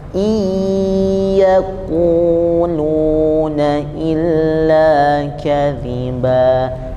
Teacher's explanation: Kemudian setiap idgham bigunnah, nun yang ketemu dengan ya itu dia melebur antara nun dan ya. Jadi nunnya tidak dibaca, langsung ke ya-nya